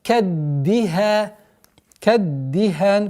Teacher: давим кончики языка на местонахождение даль, после которой огласовка кесра